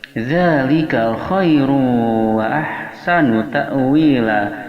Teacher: Za makharijul hurufnya berada pada ujung lisan yang disentuhkan pada ujung gigi seri yang atas.